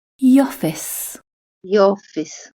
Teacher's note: The joining sound between THE and OFFICE is a /j/ sound